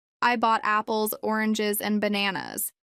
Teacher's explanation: your pitch Rises on apples and oranges but falls on bananas to show the end of the list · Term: rise fall intonation, Rise-fall intonation